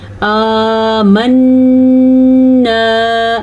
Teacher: نون کا غنہ ادا کرنا ہے اور نون غنے کے ساتھ الف بھی ہے